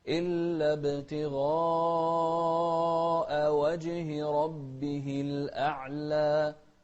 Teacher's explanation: المد هني متصل بمقدار 4 حركات